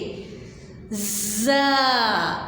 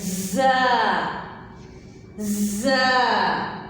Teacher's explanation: आप दांतों को थोड़ा सा बंद करें तो ये आवाज़ आएगी और ज़ुबान दांतों को बिल्कुल नहीं लगानी सीटी वाले हरूफ को पढ़ते हुए।